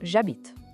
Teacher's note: o H de habiter é mudo, completamente mudo. Por isso que je e habite se juntam e viram j'habite.